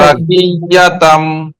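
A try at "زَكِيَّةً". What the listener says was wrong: দুই আলিফ পরিমাণ গুণা ধরে রাখতে হবে। এক আলিফ হচ্ছে না, এক আলিফ থেকেও কম হচ্ছে। জাকিয়াতাম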